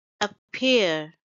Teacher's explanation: it's two syllable word and stress is on the second syllable